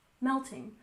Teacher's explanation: We stress the first syllable in melting